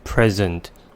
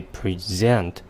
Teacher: the stress placed on the first and the second syllables creates two words with different meanings